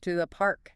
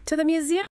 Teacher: I start low and I finish high. To the city center. Make sure your voice goes up at the end, like you're surprised. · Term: rising tone